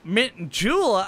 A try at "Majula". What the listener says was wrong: It's not Mint, Majula.